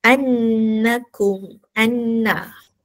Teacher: anna dengung dua harakat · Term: wajibal ghunah